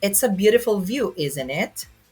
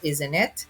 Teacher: So, it's falling intonation. So it's just a statement.